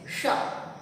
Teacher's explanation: मूर्धन्य श को बोलने में जीवा हमारे मूर्धा को छूती है।